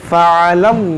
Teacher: बि आयातिल्लाहि फ़अलल्लाह, यहाँ पर आप गौर करें, इसमें जलालत से पहले ज़बर है, तो इसको हम मोटा करेंगे